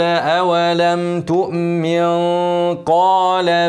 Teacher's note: قال اولم تؤمن هكن النون لو وقفت عليها لكن لو وصلتها نون ساكنه بعدها قف هنعمل اخفاء حقيقي ونغنى حركتين والغنه مفخمه عشان النون بعدها حرف القاف